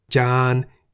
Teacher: Jan begins with a middle-class consonant Jaw-Jan. Therefore, based on the tone rules for a live syllable, Jan is in the middle tone